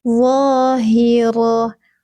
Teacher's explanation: Ni'ami, ni'ami. Zahira, ujung lidahnya sedikit keluar, pangkal lidahnya terangkat. Tebal, jadi bukan zo, tapi keluar sedikit ujung lidahnya langsung tarik ke dalam ya teman-teman.